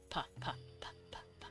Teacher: P is voiceless because you're not humming. P-p-p. You can whisper it. · For those who don't know what those are, what I'm doing in my IPA is I am listing off the sounds. Like p is voiceless because you're not humming